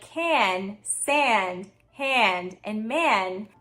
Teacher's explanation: The vowel is being nasalized as well because if we weren't nasalizing that vowel ah, we would have >> nasalizing >> have can, hand, sand, land, etc.